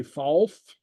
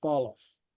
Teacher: We have the insertion of the A. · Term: helping vowel